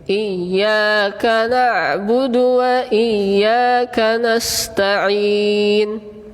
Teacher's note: Nah, kalau huruf ain sedikit alirannya.